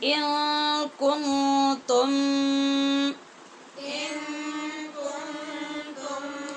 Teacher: ان کے نون پہ بھی اور کن کے نون پہ دونوں جگہ پہ اخفا ہے